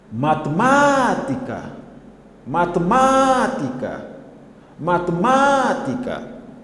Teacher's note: Claramente, a sílaba tônica é o segundo má.